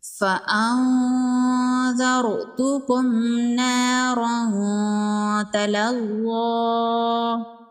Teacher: نون ساکن کے بعد حروف اخفا میں سے ذال ہے، یہاں پر اخفا ہوگا۔ نون کی آواز کو ناک میں چھپائیں گے